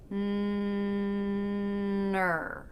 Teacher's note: You may see my lips are rounding a little bit as I'm making the N. That's in preparation for the R.